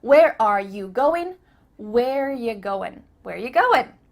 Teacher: we just changed it to ya ya not you but y a where are you going and again we cut out r where